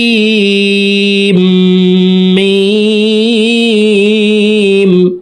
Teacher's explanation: সিন হরফকে 4 আলিফ টেনে তাসদিদওয়ালা মিমের সাথে গুন্নাহ করব। তারপরে দেখুন মিম হরফের উপরে মোটা চিহ্ন আছে, মিম হরফকে 4 আলিফ টেনে পড়তে হবে।